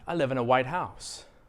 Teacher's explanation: if i stress the word house a little stronger what comes into your brain is a regular house that's painted white